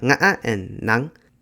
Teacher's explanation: Both languages are tonal, with Cantonese and Northern Vietnamese having 6 tones each, though the tones are quite different between the two languages, and Southern Vietnamese has only 5 tones. Vietnamese has 2 creaky voice tones, which are nga and nang, neither of which have equivalents in Cantonese.